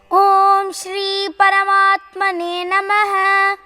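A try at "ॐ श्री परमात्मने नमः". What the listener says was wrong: Paramatmane Ma. When you say words like Ma and Pa, it should touch completely. Or it will become Paramatmane, Paramatmane, Paramatmane. Okay, Ma. Say Ma. Pa. Complete.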